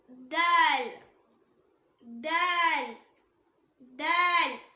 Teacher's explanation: நம்ம நாக்கோட நுனி அது மேல் வரிசை நடுப்பற்களோட ஈரை டச் பண்ணும்போது உச்சரிக்கக்கூடிய லெட்டர்.